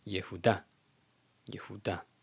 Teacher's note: a SH'VA NA, which is a brief, audible SH'VA, but it's not treated as its own syllable